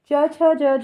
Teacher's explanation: च छ ज झ यह वाली तालव्य ध्वनि है। यहां पर हिंदी जो वर्गों का जो क्रम होता है उसमें छ तालव्य ध्वनि के वर्ग में आती है।